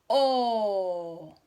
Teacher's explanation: Mi boca está redonda. También es una vocal abierta porque mi boca está abierta, ¿cierto? Hay un espacio en mi boca donde se puede ver hacia adentro.